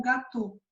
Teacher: Então, aqui ele é um ditongo semelhante ao petit gâteau do francês, por exemplo, o gâteau, que aí você acaba pronunciando como gâteau. Você não pronuncia o AU, né? Você pronuncia o O.